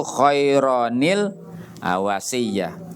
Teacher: Ini tanwin ini kalau kita wasol harus keluar nun kecil